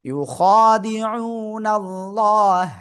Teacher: আল্লাহ শব্দের লামের ডাইনে জবর থাকলে কি হবে? মোটা আওয়াজে পড়তে হবে।